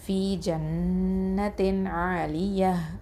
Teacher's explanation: அடுத்தது ஆலிய அப்படின்னு சொல்லும்போது த மர்பூத்தால கசரத்தைன் இருக்கு, வக்ஃபு பண்ணுறதுனால ஹ சுக்குனா மாற்றி நிப்பாட்டுவோம் · அதுக்கு அடுத்த எழுத்து ஐன் வந்திருக்கிறதுனால இதுஹாராக ஓதணும், தெளிவாக ஓதணும். இதுஹார் ஹல்கி அப்படின்னு சொல்லுவோம்.